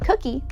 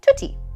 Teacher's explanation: sounds at the back of the mouth, like k and g, being produced at the front of the mouth, so they become t and d. So a word like cookie becomes tutti.